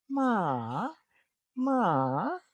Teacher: For example, if you say the word ma in a different tone like ma ma, that is a rising tone. It starts high, go down, go back high.